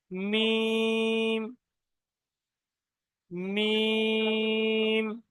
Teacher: দুটো ঠোঁটের শুকনো অংশ মিলিত হয়ে উচ্চারণ হয় মিম